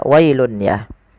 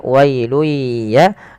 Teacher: Pada lafal wailuya ini tidak boleh dibaca wailun ya, tapi cara membacanya memasukkan tanwinnya kepada huruf ya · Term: idgham biah